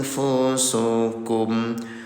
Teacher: samarkan bunyi nun sukunnya selama dua harakat